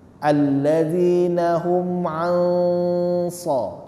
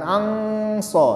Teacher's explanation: Jadi caranya tadi pada saat mengucapkan an, nunnya disamarkan, tapi posisi mulut kita ke huruf, mau mengucapkan huruf shad. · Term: ikhfa